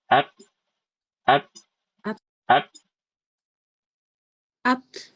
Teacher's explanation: suara hames pada huruf ta itu kayak gitu bukan suara yang keluar dari tenggorokan bukan. Suaranya dari tekanan dari ujung lidah.